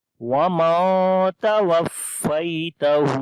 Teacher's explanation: نون ساکن ہے, اس کے بعد حروف اخفا میں سے تا آ گیا ہے تو یہاں پر نون کی آواز کو چھپا کر پڑھیں گے وَمَن تَوَفَّيْتَهُ, اور آخر میں ہا کو لمبا کریں گے, اس کے اوپر الٹا پیش ہے. یہاں پر یا لین ہے, نرمی کے ساتھ پڑھیں گے